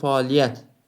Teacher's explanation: Vurğu 4-cü hecadadır. 4 hecalıdır və vurğu 4-cü hecadadır.